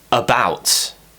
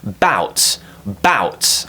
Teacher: So for example, when we have the word about, the stress is on the second syllable